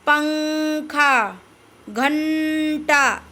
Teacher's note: जब अनुस्वार का उच्चारण करते हैं तो आवाज सिर्फ और सिर्फ हमारे नाक से आते